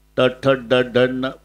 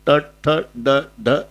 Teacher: वरच्या टाळूला जिभेचा शेंडा स्पर्श करतो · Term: तालवे